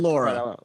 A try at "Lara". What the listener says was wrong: No, it's not Lara. There's no you. Lara.